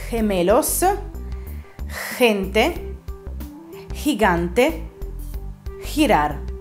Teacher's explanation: Simile alla questione della C, quando è vicino a una vocale debole, quindi la E o la I, anche la lettera G si pronuncia in modo particolare. Il suo suono è come quello di un'H aspirata. · dovete fare uscire il fiato dalla vostra gola, senza però far vibrare le corde vocali